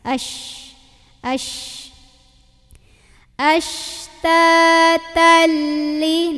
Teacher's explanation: ada angin nyebar dalam mulut karena punya ciri khas namanya tafasi